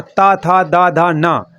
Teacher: ये आपके दंत वर्ण के अंतर्गत आते हैं और इनका जो उच्चारण होता है वो दांत की मदद से होता है, दंत की मदद से होता है।